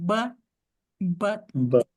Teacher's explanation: Eu não solto o ar. Eu faço todo o movimento do T, mas eu não solto o ar. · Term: stop T